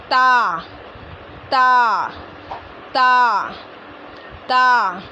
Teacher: सामने के ऊपर वाले दो दांतों की जड़ से अदा होता है